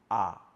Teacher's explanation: জিবাটাকে যদি সবচেয়ে নিচে নামান তখন উচ্চারিত হবে আ